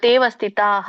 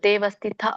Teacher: ಪೂರ್ಣ ರೀತಿಯಾಗಿ ಹ ಬರೋದಿಲ್ಲ ಅಲ್ಪ ಪ್ರಮಾಣದಲ್ಲಿ ಹ ಹೇಳಬೇಕು